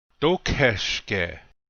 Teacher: Notice that the accent is on the first syllable.